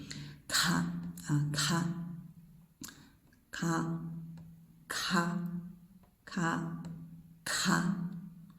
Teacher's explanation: The second one, you see there's the H, so it's the unvoiced consonant with a breath, ka, but it's one sound. When you sound k, the same time you sound the breath together.